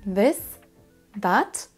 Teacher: Vous voyez que ma langue est au niveau de mes dents du dessus pour pouvoir faire le son correct en anglais